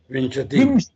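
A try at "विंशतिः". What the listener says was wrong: Vimshatihi. There is a visarga, very important. Visarga hai.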